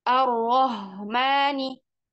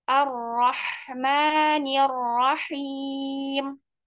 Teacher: kecil jangan ketukar dengan H besar jadi enggak boleh Rahmani tapi tipiskan h-nya keluarkan dari tenggorokan Tengah arrahmanirahim terus bagian bisnya sempurnakan harakat kasrahnya diturunkan Bibir bawahnya sama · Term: huruf ha kecil